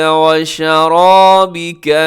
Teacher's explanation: جی یہاں پہ شرابک میں را موٹا ہے